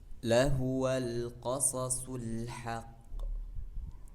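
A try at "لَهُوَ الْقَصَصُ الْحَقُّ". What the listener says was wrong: Mana qalqalahnya? Haqqu. Haqqu. Haqqu. Qo. Qo. Qo. Qo.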